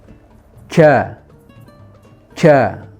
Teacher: ada yang sebagian membaca jim itu ada hembusan nafas